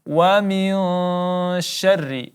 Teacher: nun mati bertemu huruf shin, maka kita baca dengung, ikhfa hakiki, 3 sampai 4 harakat. Kemudian syarri ada huruf ra yang berbaris kasrah, maka langsung ditipiskan, tarqiq, kita baca tipis.